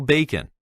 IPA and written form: ˈbeɪkən (bacon)